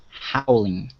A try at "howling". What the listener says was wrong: Okay, very nice.